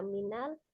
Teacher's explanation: hati-hati di lamnya tidak dipantulkan, langsung dibaca minal